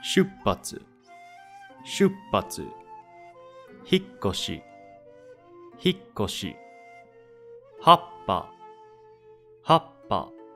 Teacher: it is the character before the small tsu that gets cut short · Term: double consonant